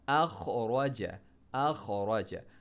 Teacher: ہا کو میڈل تھوڑا سا پڑھ کے را کو موٹا پڑھنا ہے، اخرج، اخرج، ارسل، ارسل موٹا پڑھ، اغطش، اغطش، اس کے بعد افلح، افلح، اکرم، اکرم.